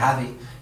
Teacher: un sonido precioso en el extremeño que es una Z sonora